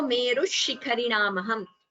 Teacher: And Meruhu Shikharinamaham, when you chant it together, Visarga Sandhi here, Merush Shikharinamaham, you get an extra sh here instead of the Visarga.